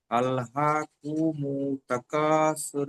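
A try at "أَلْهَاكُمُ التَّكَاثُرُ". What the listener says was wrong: মু টান দেওয়া যাবে না। আল্লাহকু, কাপ পেশ কু, কু টান দেওয়া যাবে না। এখানে হারাকাত, হারাকাত একটু টান দিতে হয় না।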